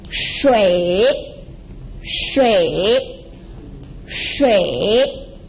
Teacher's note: the third tone, which is a falling and rising tone. So there are two parts, falling, then rising.